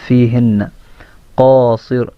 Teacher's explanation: یہاں پہ قاف موٹا، صاد موٹا، را موٹا، تینوں موٹے ہیں